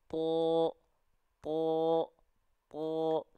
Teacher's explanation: huruf tho ketika fathah karena dia huruf yang tebal maka keluarnya condong ke vokal o